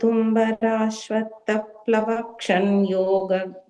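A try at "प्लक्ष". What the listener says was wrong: You're adding an extra va there. Plaksha nyagrodha. And the first line, and the plaksha, you were adding an va. Just plaksha nyagrodha hingubihi.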